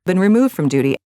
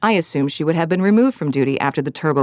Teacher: there's a little bit of vocal fry